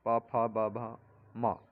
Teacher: प फ ब भ म, ये ओठों का स्पर्श करते हैं।